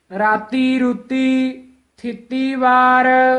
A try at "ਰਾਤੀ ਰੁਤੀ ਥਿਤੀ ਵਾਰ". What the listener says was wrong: ਰੂਤੀ ਦਲੈਂਕੜ ਨਹੀਂ ਲਾਉਣੇ। ਰਾਤੀ ਰੁੱਤੀ ਥਿੱਤੀ ਵਾਰ।